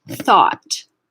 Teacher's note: You won't feel any vibration here. You're just letting the air pass your vocal folds. You're not actually activating the vocal folds. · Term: voiceless TH